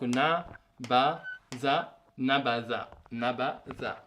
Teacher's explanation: le za avec la langue qui sort